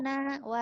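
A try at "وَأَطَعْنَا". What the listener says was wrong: Ditekan. Nah, gitu di ain tekannya wa ata'na.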